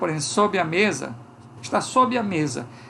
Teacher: a gente coloca um I depois desse B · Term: vogalzinha